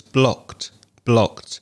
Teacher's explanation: you mispronounced the past tense of the verb block it's blocked when you have a c sound a voiceless sound at the end of a verb then the ed ending sounds like a t sound